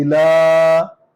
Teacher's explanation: الف کے نیچے زیر ہے، لام پر کھڑا زبر ہے، الہ، لام کو لمبا کریں گے کیونکہ اس پر کھڑا زبر ہے